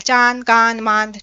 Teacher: अनुनासिक जो है नाक और मुंह से इकर आवाज हो उच्चारण होएला और बहुत मतलब आसानी से हो जाएला, है नी, कम मतलब कि ये ताकत लागेला, चांद, कांद, मांद, ठीक है।